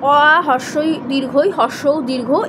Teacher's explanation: এগুলো উচ্চারণের সময় বাতাস ফুসফুস থেকে মুখের বাইরে আসতে কোনো ধাক্কা খায় না, এগুলো কিন্তু স্বরধ্বনি। এবং এই স্বরধ্বনি কিন্তু দীর্ঘস্থায়ী হয় না।